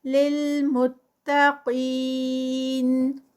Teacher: قاف ہیوی اور پھر آگے 4 counts کا اسٹریچ آئے گا سٹاپ پر